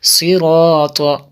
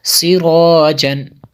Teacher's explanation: ان میں جو ہے الف سے پہلے پر حرف ہے، اس لیے الف کو بھی پر کیا